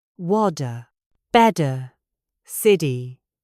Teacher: In American English, when a T appears between two vowels, such as in the word water, or better, or city, the speaker does not pronounce a T at all. They tap the tongue very quickly against the roof of the mouth. It sounds almost exactly like a D. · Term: flap T